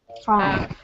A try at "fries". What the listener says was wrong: Not quite, because in fries, we have the full vowel sound I, fries. And it's a content word also. So the place we're going to see more reduction and more schwa are the kind of function words like the, to, and, a, things like that.